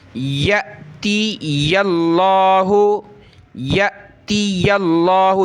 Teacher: یہ لفظ اللہ سے پہلے زبر آ رہا ہے یا پر، تو لفظ اللہ کو موٹا کریں گے